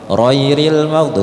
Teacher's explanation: Contohnya di ghairil maghdu. Sering dibaca roiril maghdu itu kalau orang Palembang. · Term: R berdegot